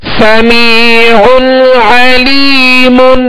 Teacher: عین وسط حلق سے ادا کریں گے, اور یہاں غنہ بھی نہیں کریں گے.